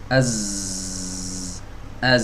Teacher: kalau Az ini tidak mengalir ya udaranya tapi ada terdengar suara